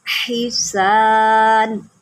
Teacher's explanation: سین کی سیٹی نکالیں کیونکہ یہ حروف صفیریہ میں سے ہے